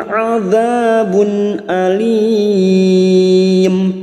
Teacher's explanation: Minhum adzabun, adza huruf ain, adza fathah bertemu alif 2 harakat. Bun duma tanwin bertemu hamzah idhar halki, duma tanwin dibaca jelas tanpa mendengung. Adzabun alim, alim pertemunya mat dengan huruf hidup yang dibaca waqaf mat arid li sukun 4 harakat kita panjangkan.